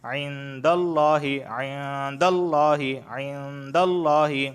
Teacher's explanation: یہاں نون ساکن کے بعد دال آیا ہے اور دال حروف اخفا میں سے ہے تو لہٰذا یہاں پہ اخفا والا غنہ ہوگا، اور لفظ اللہ سے پہلے زبر آیا ہے تو اس وجہ سے لفظ اللہ کو میں موٹا پڑھوں گا۔ عند اللہ، عند اللہ، عند اللہ، دیکھیں موٹا پڑھ رہا ہوں۔